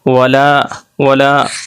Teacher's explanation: ہم دیکھیں ولا، ولا، واو زبر وا، لام الف زبر لا، الف سے پہلے دیکھیے زبر ہے، اس لیے الف مدہ، اس کو ایک الف کے برابر کھینچ کر پڑھیں گے